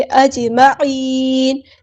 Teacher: جیم ساکن پہ یہاں پر کلکلا ہو رہا ہے، تو اس کو آپ نے ہلانا ہے ، عین کو مستحلق من الثروٹ ادا کرنا ہے، نون کو